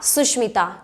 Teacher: स की जगह क्या हो जाता है, मूर्धन्य श हो जाता है, क्योंकि यहाँ जो स है वो स्वर रहित है, इसीलिए ये वाला स्वर भी स्वर रहित है।